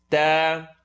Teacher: Tip of the tongue is going to come behind the top two teeth.